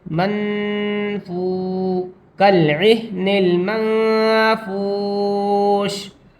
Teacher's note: تنوین یا نون ساکن کی جو آواز ہوتی ہے اس کو ناک میں چھپا کر پڑھتے ہیں، اس کو افا کہتے ہیں. میم نون زبر من، فا واو پیش فو، منفو، کالعہن المنفوش.